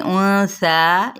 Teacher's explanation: नून पे एफ़ाई हकीकी और सा पे एक अलिफ के बराबर इसको खींचना है, यानी या 2 हरकात, ठीक है।